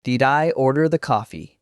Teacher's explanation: stressing did in a question shows you're surprised or confirming.